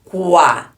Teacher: é a semivogal que o som é mais fraco e o a é a vogal que é o som mais forte como foi do fraco pro forte cresceu o som cresceu então